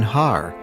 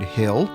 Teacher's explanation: can you hear the tongue letter or liquid in har a mountain shift to l